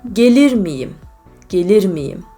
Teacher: there is semi-vowel y in between two vowels